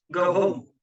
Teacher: consisting of two stressed syllables. It's a strong, heavy meter used for emphasis or in certain poetic forms. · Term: spondy